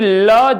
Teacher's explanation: जबकि ल को हम पार्श्विक कहते हैं क्योंकि ल जब उच्चारण करते हैं तो जिह्वा के पार्श्व से, बगल से हवा निकलती है, इसीलिए इसको हम पार्श्विक के नाम से जानते हैं।